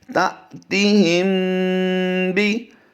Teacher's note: تا، تا زیر تی، تا تی، ہا میم زیر ہم، تا تی ہم، با زیر بی، تا تی ہم بی۔ پہلے ہم نے میم ساکن کو جب پیچھے ہا سے ملایا ہے تو ہم نے اس پر غنہ نہیں کیا، جیسے ہی با آیا تو ہم نے اس پر غنہ بھی کر دیا